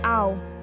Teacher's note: the mouth forms an oval and the sound is a soft sighing o.